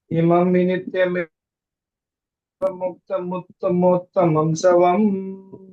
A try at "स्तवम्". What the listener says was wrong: स्तवम स्तवम, ये सवम नहीं है, स्तवम है।